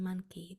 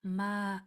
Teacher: That O at the beginning is sounding like a schwa. It sounds like a ma, and then that N, monkey, that N is that nasally sound.